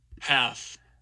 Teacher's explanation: you can hear that F2 kind of going down and becoming backer there.